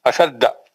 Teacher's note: अशद जाल पे है, शीन पे नहीं है.